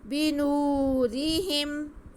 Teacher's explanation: بنو، بنو، آگے را کے نیچے دیر، ہا کے نیچے دیر اور میم ساکن، کسی کو کھینچنا نہیں ہے. بنورہم، را باریک پڑھا جائے گا کیونکہ را کے نیچے زیر ہے